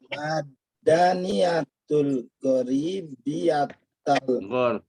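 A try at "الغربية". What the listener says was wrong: Al-gharbiyah. Al-gharbiyah. Roknya disukun. Al-gharbiyah.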